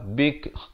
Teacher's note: Kaf itu jadi bunyi. Ada bunyi angin itu. Bunyi hamas itu.